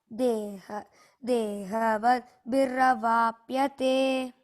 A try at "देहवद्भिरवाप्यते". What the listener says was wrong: Dehavadbhi. Bha mahaprana, no? There. Dehavadbhiravapyate.